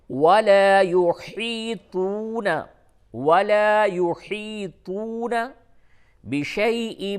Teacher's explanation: طا کو پر کر کے بولیں گے اور ہا کو حلق سے ادا کریں